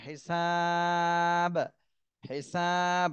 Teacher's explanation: সিনে তিন আলিফ টান দিতে হবে